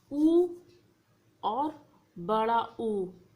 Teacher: जब हम बोलते हैं तो हमारे जो होंठ है उसकी जो आकृति है वो गोलाकार जैसी हो जाती है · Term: ओष्ठ वर्ण